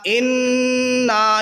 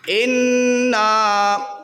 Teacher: ناک میں تھوڑی دیر آواز کو نون کی روکتے ہوئے اس کو پڑھنا ہے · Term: غنہ